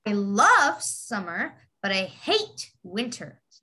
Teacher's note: the word love and hate, you have to emphasize it.